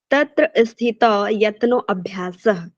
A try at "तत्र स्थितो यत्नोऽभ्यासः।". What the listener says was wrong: जो आ का उच्चारण है ना आपका, वो थोड़ा सा प्लुप्त होना चाहिए, न कि दीर्घ होना चाहिए। आपका वो उच्चारण कंठ में होना चाहिए। आ का उच्चारण भी हो, लेकिन यत्नों को क्या है आपको लंबा खींचना है।